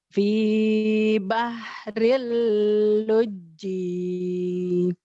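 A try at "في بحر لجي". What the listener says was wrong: Kurang. Fi bahril luji. Nya tuh ada bersisa gitu. Karena ada tasdidnya. Luji. Lebay dikit gitu. Fi bahril luji. nggak panjang. Luji. Luji. Ada nyamber gitu ya. Fi bahril luji. Dimerduin malah gini kalau dilakuin. Fi bahril luji.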